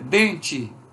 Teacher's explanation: Porque, por exemplo, se eu disser dente, esse E final é pronunciado como I e não é semivogal